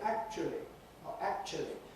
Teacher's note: there could be a schwa for the middle bit that looks as if it's a diphthong in the dictionary, right? Actually, it's a schwa in the middle.